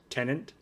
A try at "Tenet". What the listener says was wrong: There's no second N. It's just Tenet.